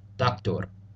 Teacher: be familiar with doctor it's pronounced the exact same way except typically with a bit of a roll on the final R